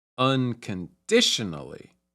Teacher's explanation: the primary stress is on the third syllable and there's also some stress on the first syllable as well